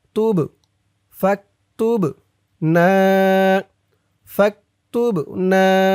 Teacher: বাটা কলকলার হরফ ধাক্কা দিয়ে পড়তে হবে